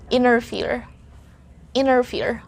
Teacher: the letter T is silent in the words having the N, T, and a vowel. So if you see that order of letters N, T, and a vowel, automatically you have to ignore the letter T. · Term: silent T